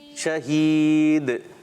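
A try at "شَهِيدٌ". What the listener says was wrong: کلکلا نہیں ہو رہا.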